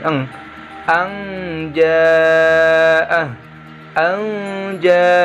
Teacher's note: deh lalu dan mencukur bertemu dengan huruf ja cara membacanya sama nun sukun nya dirubah jadi bunyi Ang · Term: Ikhfa Haqiqi